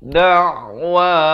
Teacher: Ain di pertengahan kerongkong.